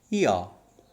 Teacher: Two sounds are there. We are beginning the articulation with one vowel sound, that is E, and we are moving towards and ending with another vowel sound, that is A. Okay, so functionally what we are doing here, we are gliding from one vowel sound to the other, so that these diphthongs are also called as vowel glides.